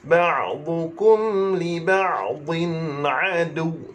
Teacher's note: huruf dad lidah duduk tepi.